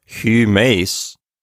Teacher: And this is another good chance to practice pronouncing the upsilon. It's like the E in feet, but you round your lips. So humes, something like that, is how you want to pronounce it.